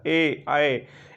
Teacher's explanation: इसमें जो है आपका होंठ गोल नहीं हो रहा है, आपका होंठ जो है फैलकर बड़ा हो जा रहा है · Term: प्रसृत स्वर